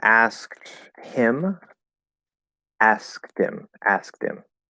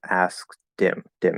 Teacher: you should hear like that D sound, T sound connect over, ask dim, dim, and become more of a D because that's what happens when T connects.